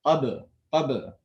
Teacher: Ba is known as a letter of qalqala. So when ba does not have a harakah and it's a sakin, then the ba is pronounced with a qalqala sound, which is also known as an echo sound